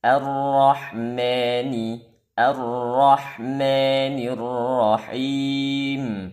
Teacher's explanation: yang salah terbaca imalah maanya dibaca imalah Apa itu imalah yaitu memerengkan harakat fathah ke kasrah bukan diucap Ma tapi diucap me